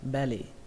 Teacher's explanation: Từ tiếp theo các bạn đọc là belly. Ở đây trọng âm của nó rơi vào âm âm đầu tiên, âm be, belly. Ở đây có hai chữ L nhưng mà các bạn cứ tưởng tượng là có một chữ L thôi, belly, belly.